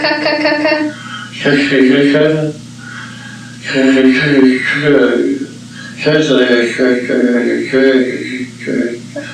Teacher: you're able to hear a good bit of hypernasality. so much so that it was sort of undermining his articulation. It's hard to understand much of what was going on.